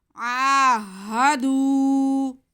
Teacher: آگے ہاں پہ زبر ہے، اسے بالکل نہیں کھینچیں گے۔ آہا، آہا، آگے دال پہ پیش ہے اور واو ساکن ہے، تو یہ واو مدہ ہو گیا۔ دال کی آواز کو ہم کھینچ کے پڑھ لیں گے۔ آہدو، جتنا عین کو کھینچیں گے اتنا ہی دال کو کھینچیں گے، سینٹر میں ہا کو بالکل نہیں کھینچیں گے۔